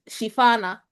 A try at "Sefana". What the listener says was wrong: the H is silent.